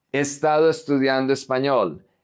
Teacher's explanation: So we don't say he, we say e.